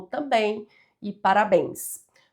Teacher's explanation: uma palavra oxítona, que tem a última sílaba mais forte